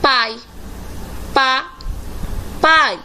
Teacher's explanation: O A se destaca e o I está enfraquecido. Então, o I aqui é classificado como semivogal.